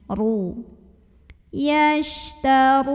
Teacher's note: Yashtarun, huruf ra dibunyikan secara tafkhim karena ra-nya ini berbaris di atas dhammah. Maka cara bacanya ditebalkan, pangkal lidah kita naik.